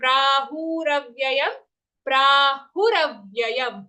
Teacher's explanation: Pra long, Hu short.